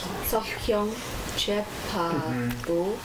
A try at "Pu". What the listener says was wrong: Pu. Not bu. Bu means worm. Pu means sun. Pu.